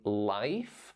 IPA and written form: laɪf (life)